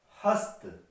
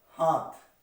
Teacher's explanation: तो यहाँ पे देखिए ता जो है पहली है और था जो है दूसरी ध्वनि है, यहाँ पे ता की जगह पे था आ जाता है, और था जो है ये महाप्राण ध्वनि है